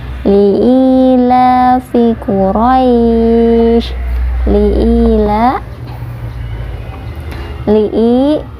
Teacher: la dibaca panjang 2 harokat juga karena ada fathah yang berdiri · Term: mad tabi'i